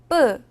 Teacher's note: 목에다 힘을 주고 브 소리를 내면 뿌 소리가납니다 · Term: 된소리